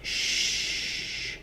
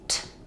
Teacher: This sound, sh, continues. This sound, t, stops.